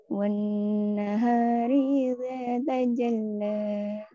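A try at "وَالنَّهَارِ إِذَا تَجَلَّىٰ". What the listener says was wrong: Nah, ini kayaknya kurang buka juga mulutnya. Coba ketika Farha dibuka mulutnya. Di when jadi when.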